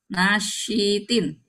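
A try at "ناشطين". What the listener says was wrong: Panjang. Tin.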